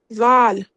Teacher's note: آپ کی جو نوک ہے زبان کی وہ اوپر کی طرف لگے گی اور سیٹی نہیں آئے گی ، بالکل نرمی سے، دال دال دال، ٹھیک ہے۔ اب یہ